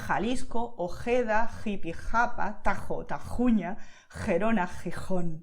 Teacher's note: It's very guttural, it's like very deep in the throat where that sound is coming from, okay? You are expelling the air, but you're in a much deeper region of the body, okay?